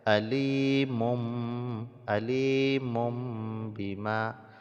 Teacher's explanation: bertemu dengan Ma hukumnya iqlab iqlab itu artinya membalikkan maksudnya adalah membalikkan bunyi tanwin ataupun nun mati menjadi Bunyi mim yang mati